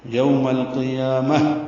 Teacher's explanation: یہ ہا ساکن بن رہی ہے تو میم کو ہا سے ملا دیں گے، ہا ساکن پہ ہمس ہوگا